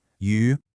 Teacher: This one has a nice clean rising tone.